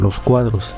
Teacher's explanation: los no tiene acento y se pega a la siguiente palabra que si lo tenga